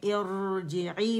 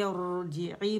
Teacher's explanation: جب بھی را ساکن سے پہلے حمزۃ الوصل آئے گی تو اس حمزۃ الوصل کو ہم زیر سے اٹھائیں گے، اور وہ را جو ہے وہ موٹی پڑھی جائے گی. اس لیے میں ارجعی پڑھ رہی تھی، ارجعی پڑھ رہی تھی، اور جی کے لیے آواز نیچے جائے گی، عی کے لیے نیچے جائے گی.